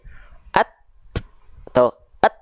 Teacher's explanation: kalau percikan nafas dia tertahan dulu suaranya syiddahnya dulu baru hamsnya at Ath et kan tahan dulu tuh baru keluar percikan nafasnya